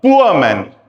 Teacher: दूसरी साउंड ऊ से शुरू हुई और वो अ पे खत्म हो गई, तो उसका एग्जांपल है जैसे he is अ पुअर मैन, प उ अ, पुअर मैन, पुअर मैन नहीं, पुअर नहीं, he is अ पुअर मैन, पुअर मैन। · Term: डिफ्थोंग